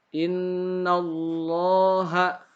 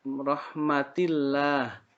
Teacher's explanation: lafaz Allah yang dibaca tafkhim. Artinya tebal.